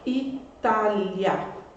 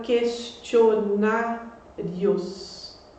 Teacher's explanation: nas duas a sílaba tônica é a penúltima portanto é uma palavra paroxítona e as duas terminam em ditongo